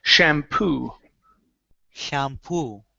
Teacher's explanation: The stress is at the end of the word. Instead of shampoo, it's shampoo, and we need a good P here.